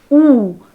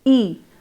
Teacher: So lip rounding, I will just like you to take care of this particular thing, that as you compared I and you probably noticed that your lips changed shape as you shifted from the front vowel to the back one. Your lips were rounded as you pronounced you. They were unrounded, spread or neutral as you produced E.